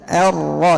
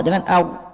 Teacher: Jangan keluarkan, jangan mengucapkan huruf ra itu dengan memoncongkan mulut. Nah, ini kesalahannya menggabungkan 2 huruf sekaligus, huruf ra dengan huruf waw. Kenapa? Karena pemoncongan mulut itu makhraj daripada huruf waw.